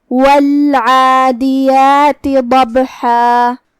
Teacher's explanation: کلمت والعادیات میں یہاں حرف العین ہے. ہم عین کو حلق کے درمیان والے حصے سے ادا کریں گے. اس کے بعد یہاں کھڑا زبر ہے، 2 حرف کے برابر ہم اپنی آواز لمبی کریں گے.